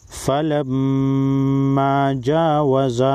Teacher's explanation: میم مشدد پر غنہ ہوگا اور میم الف زبر ما کو ایک الف کے مقدار کھینچ کر پڑھیں گے کیونکہ یہ الف مدہ ہے۔